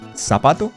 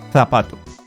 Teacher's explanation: So, so in Latin American Spanish, we don't make that difference. So, the C, the Z, and the S in Latin American Spanish is pronounced the same, the exact same · They pronounce the C and the Z as th, an equivalent to the TH sound in English. That is represented by the symbol theta.